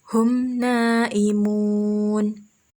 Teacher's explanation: Cara membacanya yaitu dengan melafalkan huruf-huruf hijaiyah yang bertemu dengan huruf mim sukun dengan terang dan jelas, dan ini tidak disertai dengan dengung atau hunnah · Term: idhar syafawi